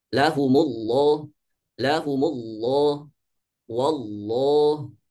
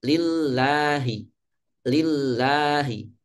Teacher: ketika didahului oleh harokat fathah dan dhammah, maka lafaz Allah ini dibaca tafkhim.